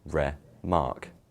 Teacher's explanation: Re is the unstressed syllable with a weaker emphasis, while mark is stressed with a stronger emphasis, re-mark. See? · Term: iamb